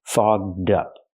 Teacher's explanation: We have to use the voiced ggg sound. Fog plus the voiced d sound